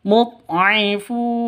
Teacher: Mud'ifun panjang boleh 2, boleh 4, boleh 6 ketukan. Kenapa? Karena mad arid lisukun.